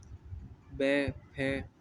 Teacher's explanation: दंत्योष्ठ मतलब बै, फै, इन वर्णों के उच्चारण के समय ऊपर के दांत तथा नीचे के होंठ का प्रयोग होता है